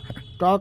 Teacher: ट का उच्चारण स्थान मूर्धा